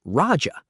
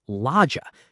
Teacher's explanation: in true eastern Magadhi the r sound is replaced by an L